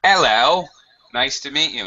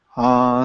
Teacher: the H is dropped in some, I wouldn't say many, but in some strong accents, strong British accents. That's right, the H can be sometimes dropped, so something you should be aware of. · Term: Cockney accent